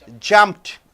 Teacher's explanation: p is unvoiced over here so you are saying jumped j-u-m-p-t jumped so one syllable